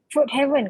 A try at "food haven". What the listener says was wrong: but you don't say heaven because this one tak ada E kan kat tengah. You say food haven. Yeah, because there's no E. Heaven is like syurga.